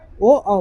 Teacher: अगर पूछो कि कंठ ओट्स कौन कौन से वर्ण निकालता है तो बोलना ओ, मानी ओ जो बोलोगे और जब बोलोगे तो उसमें कंठ का भी होगा, कंठ का भी काम होगा, उसमें लिप्स का भी काम जुड़ेगा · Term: कंठोष्ठ वर्ण